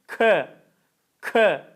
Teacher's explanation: Kaf harfi dil ortasından değil dil kökünün bir parmak yukarısından Tok ses olacak çi değil K şeklinde değil de k k şeklinde Evet Eee